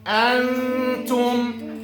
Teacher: we're gonna move the tongues close to the ta, like this, and applying long gunna